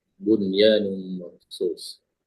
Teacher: Jadi nunnya dibaca dengan jelas, tidak didengungkan, ya, dibaca dengan izhar.